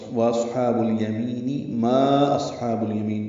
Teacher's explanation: واو ہونٹوں کی نا تمام گلائی سے ادا کریں گے